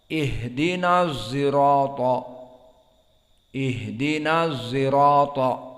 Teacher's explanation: Fahunaka aidha qiraah ukhra bi ismam as-sad sautu zai. Idan al-ismam bimakna dicampur, as-sad bi saut az-zai.